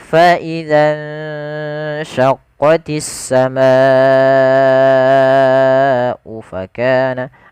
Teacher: Maka kita wajib membacanya sepanjang 4 atau 5 harakat. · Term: mad wajib muttasil